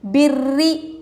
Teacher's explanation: تشدید والی را ہے، را کے نیچے زیر ہے، را کو ہم باریک پڑھیں گے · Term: رائے مشددہ